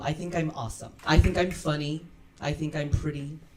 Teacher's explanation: And also, of course, I believe her natural voice quality also contributes a lot here. And her voice seems to have a mid to low pitch. But regardless of whether it's high or mid, when we place our hand on our chest, okay, when we talk, we can feel the vibration there. · during this process, her voice has a great chest resonance.